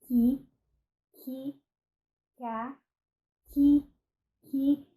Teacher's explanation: O K, ele é realizado um pouquinho mais atrás, no nosso véu palatino.